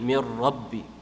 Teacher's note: It's merged completely, so it's It's what you call idgham tam, so it's completely idgham, completely fused, but there's no gunna, so you don't stretch it